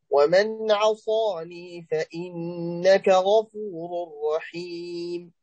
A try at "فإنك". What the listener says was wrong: رقق الفاء. فإنك رقق الفاء.